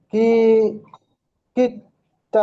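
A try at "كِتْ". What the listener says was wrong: হ্যাঁ, কিত তা বলছেন কেন? কাফ তাজের কিত।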